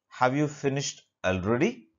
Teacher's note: the pitch of the voice rises at the end of a sentence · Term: rising intonation